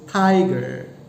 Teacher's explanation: the word tiger consists of two syllables, and then the first syllable is given stress